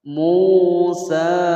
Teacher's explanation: Mu panjang dua harokat sebab ada wawu sukun sebelumnya harokat dhammah. Ini adalah mad tabi'i, kita baca panjang selama dua ketukan atau dua harokat.